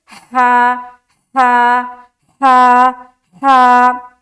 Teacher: تو جب اس ہا کو ادا کریں گے تو حلق سے ایک ہوا کی سی آئے گی، جیسے کہ ہا، ہا، ہا، ہا۔ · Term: وسط حلق